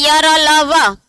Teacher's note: एक भी वर्ण बोलते समय बहुत ज्यादा प्राणवायु बाहर नहीं निकल रही है, तो ये कैसे है, अल्प प्राण।